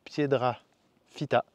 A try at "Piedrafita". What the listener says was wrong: Non, c'est pas un deux mots, c'est un seul mot. Piedra Fita.